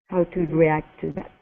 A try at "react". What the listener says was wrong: Give me a good R instead of react. React.